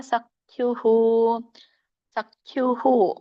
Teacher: ಉಸ್ವರ ಕೂಡಿದೆ ಹಾಗಾಗಿ ವಿಸರ್ಗ ಕೂಡ ಉಚ್ಚಾರಣೆ ಬರುತ್ತೆ